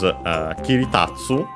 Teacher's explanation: kiritatsu, unaccented, so be careful, despite tatsu being accented